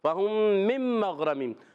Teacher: نون ساکن کے بعد میم آ گئی تو ادغام مال غنہ ہوگا